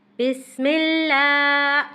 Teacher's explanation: لام کو باریک اور مضبوطی سے پڑھنا ہے اور کھینچتے ہوئے پڑھنا ہے